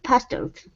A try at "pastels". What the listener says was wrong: Now that last word, instead of pastels, it's pastels. Pastels. The stress is on the end of the word. So in this situation, we wouldn't say pastels, okay, because it's stressing that EL, we say pastels.